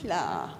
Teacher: the sound where you have air coming out both sides of your tongue and then the the sla with a dot under it which is kia.